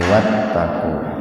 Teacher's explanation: karena sebelum hamzah wasol itu ada wawu, maka hamzah wasolnya diabaikan saja. Jadi wattaqu.